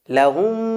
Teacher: হলো মিম সাকিন আর পরবর্তী শব্দের প্রথম বর্ণ হলো মিম তো এই লাহুমের শেষ বর্ণের মিমটা দ্বিতীয় শব্দের মিমের ভিতরে ইদগাম করে আমরা যুক্ত করে গুন্না করে পড়বো লাহুম আর এই গুন্নাটাকে বলা হবে ইদগামে শাফাবি বা মিম সাকিনের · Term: মিম সাকিনের ইদগাম